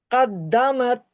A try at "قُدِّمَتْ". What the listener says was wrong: قدمت، قوف ہے قوف. قد نہیں ہے نا، اور موٹا پڑھیں. پورا قوریوں والا انداز چاہیے مجھے، ایسے عام سا نہیں، قدمت نہیں، قدمت موٹا کر کے قوری.